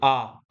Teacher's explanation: आ बोलते समय हमारा पूरा मुख खुला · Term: विवृत